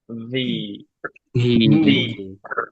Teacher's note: উপরের দাঁত নিচের ঠোঁটে লাগবে। ভি, ভি, বাতাস বের হবে এফ এর মতো।